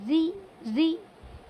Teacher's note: جب را کے نیچے جب زیر ہوگا تو اس وقت را کو پر نہیں پڑھیں گے بلکہ باریک پڑھیں گے، اسے را زیر ری ری، پر نہیں پڑھیں گے بالکل بھی را کو۔